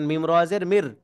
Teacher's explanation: নুন সাকিনের পরে র আসছে, তাই আমরা র ঈদগামে বেলাগুন্নার হরফ, এই জন্য আমরা এখানে কি করব? গুন্না ছাড়া মিলিয়ে পড়বো।